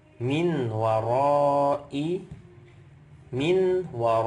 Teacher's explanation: Min War ini ada nun sukun ketemu wau berarti Idam bunah nunnya diidamkan dileburkan masuk ke huruf waau jadi nunnya enggak dibaca lagi tapi ingatun dengan dengung jadi jangan kita hanya membaca huruf wau